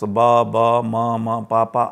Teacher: sounds where both the lips are being used, followed by some vowel which is mostly a or e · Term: bilabial sounds